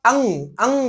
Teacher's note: अगर आप अंग अंग बोले तो नाक से आपकी ध्वनि निकलेगी और नाक से ही आपकी हवा निकलेगी। तो एक ऐसा वर्ड या किसी भी वर्ड के उच्चारण में जब नाक से ध्वनि और नाक से ही हवा निकलती है तो उसको हम अनुस्वार बोल देते हैं।